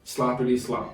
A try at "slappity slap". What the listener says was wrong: Slap, not slop. Slap.